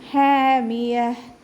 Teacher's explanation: ഹ sound clear ആക്കുക. തൊണ്ടയുടെ മധ്യഭാഗം വസത്തുൽ ഹൽഖ്. അപ്പോൾ അതിൻ്റെ സൗണ്ട് ക്ലിയർ ആക്കിക്കൊണ്ട് തന്നെ ഉച്ചരിക്കുക.